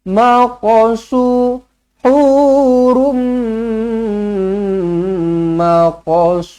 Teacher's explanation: huruf Kaf mati jangan ditahan-tahan biar lepaskan dia lantunkan je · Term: Qalqalah Sugra